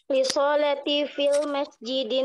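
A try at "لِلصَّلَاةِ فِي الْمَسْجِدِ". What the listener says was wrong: Bukan sonya yang panjang, li sholati lamnya yang panjang.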